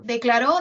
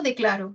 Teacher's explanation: Está ubicado en la última sílaba, pero yo puedo desplazarlo a la penúltima y con ello se logra un cambio de significado. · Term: acento